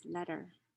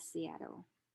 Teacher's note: the voiceless alveolar stop is pronounced as the flap sound when it occurs after a stressed vowel and before an unstressed vowel